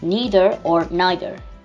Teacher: in american it's the same but we do a stronger r